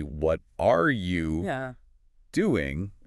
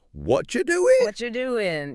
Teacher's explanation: very very often shrinks down and links up to sound more like what you doing